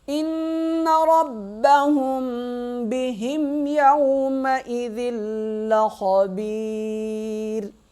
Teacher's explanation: خا موٹا پڑھا جائے گا، با یا زیر بی، یا کو ایک الف کی مقدار کھینچیں گے، را کو وقف کی صورت میں باریک پڑھیں گے،